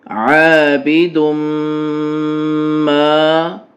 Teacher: دال کو میم سے ملاتے ہوئے غنہ کریں پھر ما پڑھیں